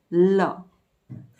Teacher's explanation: હવા 2 પડખેથી પસાર થાય છે અને તેથી એને પાર્શ્વિક વ્યંજન કહેવામાં આવે છે.